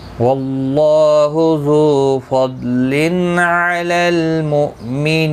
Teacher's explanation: 3 سے 5 الف کی مقدار کے برابر 3 سے 5 الف کی مقدار کے برابر کھینچ کر وقف کریں گے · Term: مد العارض وقفی